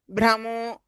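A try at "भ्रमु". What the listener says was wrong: ఇక మీరు దీర్ఘాలు పెడుతున్నారు భ్రము అది కాదు భ్రము అంతే భ్రము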